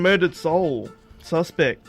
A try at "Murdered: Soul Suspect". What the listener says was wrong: Why do you always put the pause at after soul? It's murdered soul suspect, not murdered soul suspect.